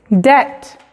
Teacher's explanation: Cuando la B viene antes de la T, en la misma sílaba, la B es muda.